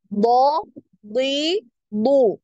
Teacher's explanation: ya dia tidak tebal ketika kasr beda halnya dengan huruf D Nah huruf d ini ketika kasrah pun dia tebal ya · huruf bo ini ketika kasroh pun dia tebal ya